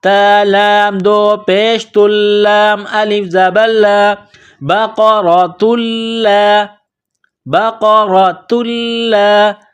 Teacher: بقرۃ لا، یہ گول تا ہے، اس کے اوپر تنوین ہے، گول تا کو لام کے ساتھ پلس کرنا ہے، لام میں سختی کرنی ہے.